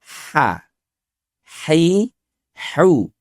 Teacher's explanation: huruf H keluarnya dari wasatol halki, yaitu tenggorokan bagian tengah. Bunyinya lebih ringan.